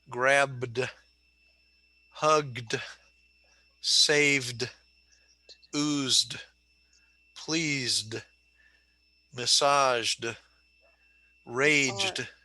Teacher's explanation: word okay like take the word grab is voiced so now after voiced sounds it's going to sound like the d like in good